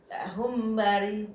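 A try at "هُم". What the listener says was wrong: Ditahan tuh nah humnya. Ya, jadi mimnya ya.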